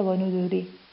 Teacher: في حال أني قرأتها وصلا فهي راء مكسورة فترقق بسبب الكسر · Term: الترقيق